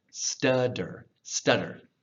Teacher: whenever we say a T, especially between two vowels, often the T reduces to a D sound. I believe that's called a vocal flap. · I know that sounds crazy because that's a double T sound, but between two vowels especially, that double T will very often become a D sound. Stutter, stutter.